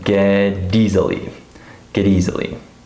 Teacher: we have a final T and then a beginning vowel. Remember that T's always become D sounds when we link them. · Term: linking